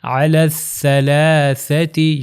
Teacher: اب یہاں پر غور کریے گا، یہ ہے سا، الف با تا سا، کہ جس کو اردو میں سے کہتے ہیں، بے تے سے، مگر عربی میں سا اس کا نام تھا، اور اس کا تلفظ ہم نے بتایا تھا کہ اوپر اور نیچے والے دانتوں کے درمیان میں زبان آئے گی، زبان تھوڑی سی باہر آئے گی